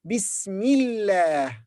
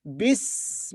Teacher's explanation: Here we don't say Allah, but say La, because it's preceded by kasra. When the word Allah is preceded by kasra, like here, it becomes La.